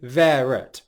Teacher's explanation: we're using a linking 'r' sound